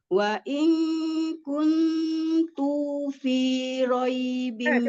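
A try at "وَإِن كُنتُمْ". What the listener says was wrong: Kuntum. Pakai ada mim sakinah tuh, ada mim sukun tuh. Wa in kuntum.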